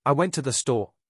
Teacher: Australian English often has this rising intonation at the end of statements, even when it's not a question. So something like I went to the store might sound like they unsure even if they are just telling you what they did exactly.